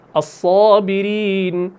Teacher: مثال کے طور پر صاد ہے, صاد کی صفت کیا ہے؟ صاد کی صفت ہے صفیر, یعنی سیٹی جیسی آواز. الصابرین, تو یہ سیٹی والی آواز ہے.